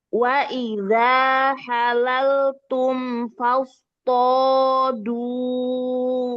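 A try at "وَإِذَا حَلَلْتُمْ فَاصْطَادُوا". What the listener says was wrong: To-nya juga dua harokat. Du-nya juga dua harokat.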